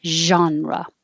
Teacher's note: it's the same as shh but use sound so use voicing and keep the airflow going genre a lot of americans will just make a j genre